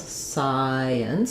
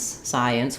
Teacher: Science with the sigh being stressed. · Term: syllable stress